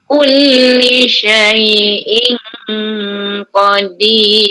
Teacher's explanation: Syai'in, yang susah sikit sebut ni jangan sebut in qadir. Okey, dia ada tanda jumpa qaf, ikhfa yang tebal lah, sebab qaf turut tebal kan. Sebut i satu harakat.